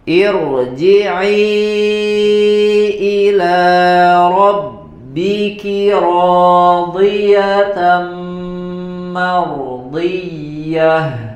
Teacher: Di sini, ya, pada kata di sini diberi harokatnya kasroh ir, ya. Tetapi karena kasrohnya kasroh yang bukan asli, laisat asla, maka dibaca dengan bacaan yang tebal